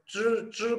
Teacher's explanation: twist होके जब च को प्रोनाउंस करेंगे तो च ट्विस्ट करके ऊपर वाली हार्ड पैलेट को टच करके हवा को बाहर की तरफ फेंकना है